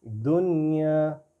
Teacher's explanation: نون کے اوپر bouncing sound نہیں آئے گی بالکل بھی۔